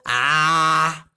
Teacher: उच्चारण मुख द्वार का पूरा खोलना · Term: विवृत स्वर